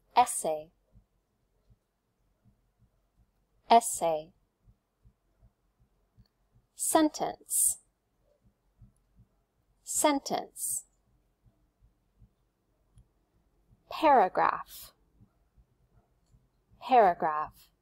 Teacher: Paragraph. So all of those examples have stress on the first syllable.